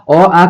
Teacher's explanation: तो के से माने कंठ से, तो समझ लिए कंठ से क्या आ जाएगा, अ आ का उच्चारण स्थान अ आ और ह का उच्चारण स्थान जो है कंठ होता है